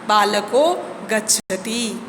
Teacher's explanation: विसर्ग के पूर्व यानी कि पहले वाले अ तथा विसर्ग दोनों के स्थान पर ओ हो जाता है